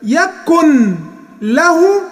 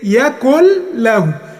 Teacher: يكن له هتبقى يكل له، هتبقى ايه؟ يكل له. النون هتتقلب لام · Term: ادغام